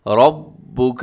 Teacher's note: را موٹی پڑی جائے گی اور ساتھ مضبوطی کے ساتھ آپ نے پڑھنا ہے ، رَبُّكَ، کیونکہ با کے اوپر تشدید ہے، لِلْمَلَائِكَةِ، یہاں پر